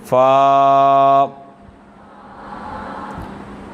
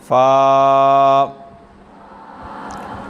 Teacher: اوپر کے دانتوں کے کنارے اور نچلے ہونٹ کے تر حصہ سے ادا ہوتا ہے